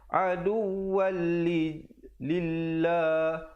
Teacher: Sekali lagi idgham bila gunnah di situ, waw tanwin 2 di atas bertemu lam yang bersabdu. Aduwal lillah dibaca dengan nipis lafzul jalalah.